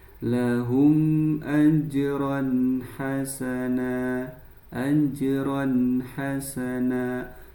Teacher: Fathah tanwinnya ini dibaca dengan jelas dinamakan, betul, idhar halqi